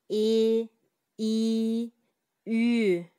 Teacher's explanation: и, үй үндүү тыбыштарын айтканда тил алдыга карай жүткүнүп, бир аз ичкеригендей абалда болот. Ошол себептен муну ичке үндүүлөр деп атайбыз.